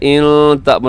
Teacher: नून साकिन के बाद हमजा इजहार कीजिएगा